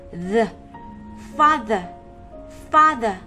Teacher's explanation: Các em còn nhớ từ này phải thè lưỡi ra để đọc không? Cổ của mình rung đấy các em ạ.